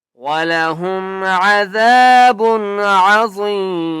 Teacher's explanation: ذال کو نرمی سے پڑھنا ہے اور ایک الف کی مقدار کھینچ کر پڑھنا ہے